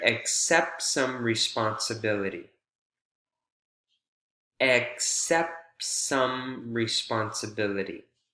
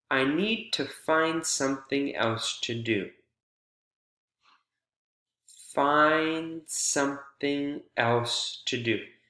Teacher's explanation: The D is omitted again because you have this consonant cluster, NDS, PTS, or CTS. The middle T or the middle D is omitted. And then in doing so, we call that linking.